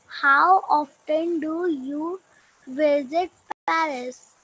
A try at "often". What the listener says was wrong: Yes Ananya, ऑफ्टन नहीं होता, इसमें टी साइलेंट होता है, ऑफन। How ऑफन।